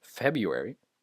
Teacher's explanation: In American English, at least, the R is pronounced like here. You can't hear the R. It's turned into a U sound.